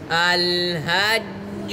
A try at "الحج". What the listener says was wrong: आपने الحج हानी से पढ़ी।